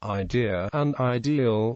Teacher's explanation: L is pronounced darkly where it is present too, which means that in Bristolian rendering, idea and ideal are homophones.